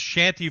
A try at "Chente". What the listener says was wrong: His name is Chente with Chente. With a hard CH.